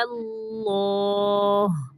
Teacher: پہلا لام باریک اور دوسرا لام موٹا پڑھنا ہے